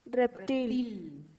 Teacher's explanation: El golpe de voz lo lleva en til.